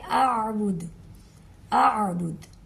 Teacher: پہلے حمزہ کی آواز آئے گی پھر عین کی آواز آئے گی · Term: حمزہ اور عین